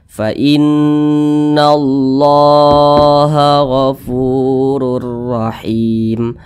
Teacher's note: Nah, di atasnya ada tanda baca alif kecil nih yang berdiri, atau tanda baca fathah berdiri. Nah, maka kalimat Allah dibaca panjang. Ini namanya mad tabi'i, panjangnya 2 harakat atau kira-kira 2 ketukan.